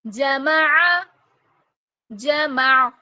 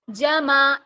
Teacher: जब ऐन को साकिन करेंगे तो इसमें हमजा का साउंड ना आए जमा ऐसे ना पढ़ें ऐन का मखरज वाज़ तौर पर क्लियर